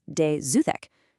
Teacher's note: that Z sound is actually just the silent plural S from the word des waking up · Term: liaison